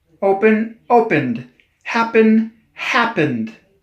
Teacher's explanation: when you pronounce open you can feel your throat moving that's why it's called a voiced ending